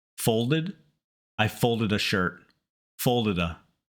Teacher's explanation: So remember, if a word ends with a vowel plus D, like the id and wanted, folded, weighted, and the next word starts with a vowel, we change from the normal D to that fast tap.